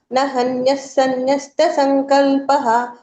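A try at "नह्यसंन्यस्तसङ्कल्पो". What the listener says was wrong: fast వెళ్ళిపోతున్నారు ఎందుకు third line third line మళ్ళీ చెప్పండి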